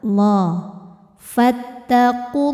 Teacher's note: Lam jalalah atau lam pada lafaz Allah dibaca secara tafkhim karena harokat sebelumnya dhammah. Maka lamnya tebal.